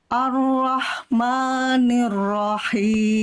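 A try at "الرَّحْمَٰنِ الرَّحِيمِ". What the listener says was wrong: Ni-nya jelaskan. Ar-Rahmani. Ni, angkat tengah lidah. Ar-Rahmanir-Rahim.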